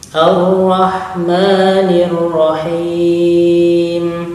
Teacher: huruf ha yang diposisikan di pertengahan tenggorokan, ha mendesah